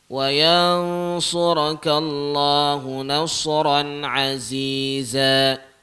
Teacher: nasran tu dia hukum dia izhar. Jadi dia tak dengung kat situ.